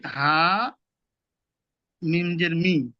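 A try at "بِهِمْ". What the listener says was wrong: হামিম জের মি হয় না, হামিম জের হিম।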